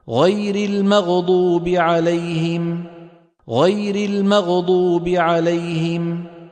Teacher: لأنه لم يعطي الغين حقها من الرخاوة. لو أعطى الغين حقها من الرخاوة لما تقلقلت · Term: قلقلتها